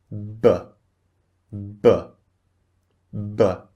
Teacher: You can feel a little burst of air on your hand.